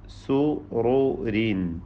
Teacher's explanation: ഇവിടെ സുറൂരിൻ എന്ന പദത്തിൽ റായിന് തഫ്ഖീം കൊടുക്കണം, തടിപ്പിക്കണം.